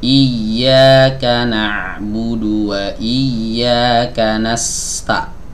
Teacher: sebelum masuk ke huruf ta biarkan sinnya ngalir dulu agak panjang sedikit iyaka nabudu wa iaka nasta nah begitu nasta biarkan sinnya ngalir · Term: rakhawah